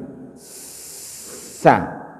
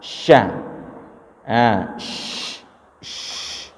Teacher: Sa. Sedangkan shin itu fokusnya itu di tengah lidah. Ya, tengah lidah bertemu dengan langit-langit atas.